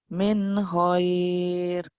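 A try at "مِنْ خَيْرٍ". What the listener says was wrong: orang Jawanya keluar lagi itu go Bu, bukan hoir. Go, goir. Orang Jawa pasti go hoir.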